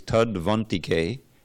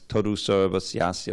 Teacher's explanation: that used to be a U and became a V because the next word begins with a vowel